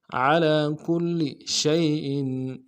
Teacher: شین کو یا کے سامنے لانا ہے، یا لین بغیر کھینچے پڑیں گے، حمزہ کے نیچے تنوین ہے، غنہ کریں گے.